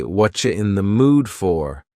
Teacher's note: Here, the word you has been reduced to cha. Cha, this is extremely common in spoken English that the word you get's changed up in a lot of ways.